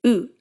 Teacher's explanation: tongue position here is basically the same as english's oo vow your tongue is high up and back in your mouth